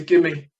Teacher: the V of the give has been cut